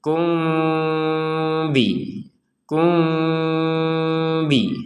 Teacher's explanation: Mim sukun meeting ba juga dibaca secara tidak jelas